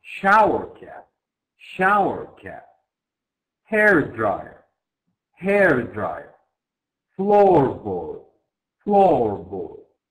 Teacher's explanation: the stress on the first noun in the compound noun